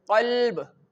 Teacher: this qaf is pronounced from your throat and this qaf have a thick sound